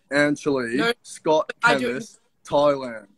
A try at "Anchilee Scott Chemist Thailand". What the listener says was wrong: My Thai, not my. You gotta do it like slowly.